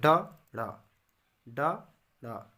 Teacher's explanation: हमारा जीभ उल्टी होकर जीभ का जो नोक है वो तालु को छूती है, झटके मारकर हट जाती है, जैसे ड, ड़, ड, ड़, उपक्षिप्त व्यंजन कहलाती है।